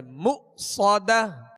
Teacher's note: صاد کو سیٹی کی آواز میں اور پر پڑھیں گے